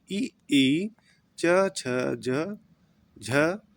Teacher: ऐसे वर्ण जिनका उच्चारण में जिह्वा और तालु को स्पर्श करती है उन्हें तालव्य वर्ण कहते हैं